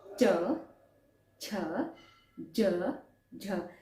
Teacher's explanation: आपकी जीवा तालू टच कर रही है और स्वर का उच्चारण कर रही है या व्यंजन बोल रही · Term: तालव्य